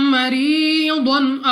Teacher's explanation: یا ساکن سے پہلے زیر یا مدہ 2 سیکنڈ تک کھینچ کر پڑھا جائے گا۔ ضاد مستعلیہ میں سے ہے، موٹا پڑھیں گے · میم ساکن کے بعد دوسری میم، ادغام میں شفوی کا قاعدہ ہے، یہاں پہ بھی غنہ کر کے پڑھنا ہوگا۔ را کے نیچے زیر، تو را کو باریک پڑھیں گے اپنی آواز کو نیچے گرا کر۔ یا ساکن سے پہلے زیر یا مدہ 2 سیکنڈ تک کھینچ کر پڑھا جائے گا۔